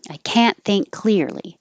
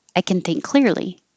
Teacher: It will just sound like kin. So you're really just going from the K sound to the N sound.